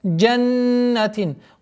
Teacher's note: Удержание назализации в размере двух огласовок.